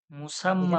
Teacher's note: তাসদিদের উপরে খাড়া জবর হয়ে যাবে, মুসাম্মা, এক আলিফ টান হবে।